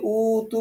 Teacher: উতে তো টান নেই উ তু তুতে টান